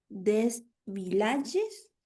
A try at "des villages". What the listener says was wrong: Pronuncio la S final.